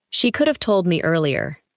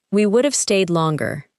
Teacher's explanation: Each phrase contains have, but the word is weak and connected to the word before it.